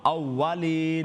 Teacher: یہ more of a W sound اس میں ہو, V sound نہ ہو